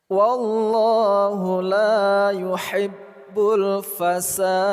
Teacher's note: lafaz Allah kita baca secara tafkhim atau tebal